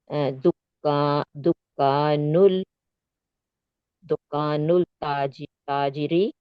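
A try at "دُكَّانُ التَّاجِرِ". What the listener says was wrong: यहाँ पे तशदीद आ रही है ना, तो अभी आपको लाम को स्किप करना है। जब तशदीद आती है तो लाम को स्किप कर देते हैं। दुकान नुत ताजिर, ताजिरी। यहाँ पे तशदीद नहीं थी तो आपने लाम को स्किप नहीं किया, आपने मिफ्ताहुल पढ़ा। और यहाँ पर आपकी तशदीद आई है तो लाम के ऊपर कुछ नहीं है, आपको लाम को स्किप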